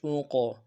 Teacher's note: قلقلہ بس ہے، موٹا بھی کریں گے، قلقلہ بھی کریں گے